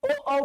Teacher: ओ औ कंठ से लेकर होठ तक रेंज है उसका, क्योंकि होठ भी वर्क कर रहा है। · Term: कंठोष्ठ